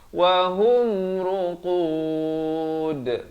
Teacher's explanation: Dan di sini dalnya diberikan pantulan ya, qalqalah kubra di sini